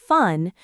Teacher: your top teeth touch your bottom lip. Similar to V, but F doesn't use your voice. It's just air.